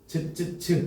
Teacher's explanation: 혓바닥과 센 입천장 사이에서 나는 소리라고 합니다. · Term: 센 입천장 소리